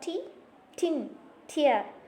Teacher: The process of place of articulation takes place from the tip of the tongue and it articulates with the alveolar ridge.